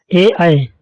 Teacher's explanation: कंठ तालव्य में वे ध्वनियां हैं जिनका उच्चारण कंठ और तालु के सहयोग से होता है।